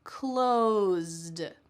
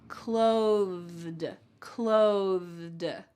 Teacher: When I say that TH, my tongue is going to come out of my mouth just a bit.